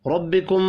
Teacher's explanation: ربکم، را زبر کی وجہ سے پر پڑھا جائے گا، ملانے کی صورت میں اظہار شفی ہوگا، غنہ نہیں ہوگا